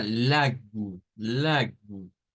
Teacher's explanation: la L del español que se hace alveolar